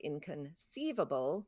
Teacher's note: And in a word like inconceivable, one, two, three, it's on the third syllable.